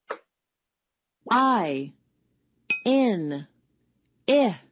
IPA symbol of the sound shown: ĭ